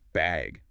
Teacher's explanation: do you need a bag or even just bag with a rising tone